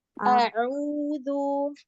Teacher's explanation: ain itu bukan huruf khoisyum ya, bukan huruf hidung. Jadi tidak ada sedikit pun dia ke hidungnya.